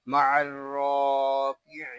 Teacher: را کو پر پڑھیں گے، را کو ایک الف تک کھینچ کر بھی پڑھیں گے